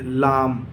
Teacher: लाम का मखरज बहुत आसान है, ज़बान की नोक और ऊपर के मसूड़े